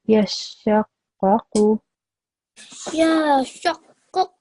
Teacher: Because that's making the sheen sound long, which is incorrect because the sheen only has a fatha, as does the qaf.